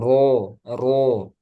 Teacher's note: Nah, ro ketika fathah tebal.